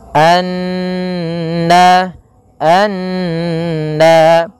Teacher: Cara membacanya yaitu kita menahan suara n, ya, sepanjang 2 harakat, baru dilepaskan. Anna, anna, baru kita lafalkan na. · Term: gunnah, ghunah